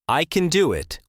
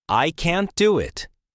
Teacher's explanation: Say I can do it with a short a sound. For can't, make the a longer and stronger.